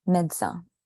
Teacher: usually French people say médecin. They just cut the E and just do D to C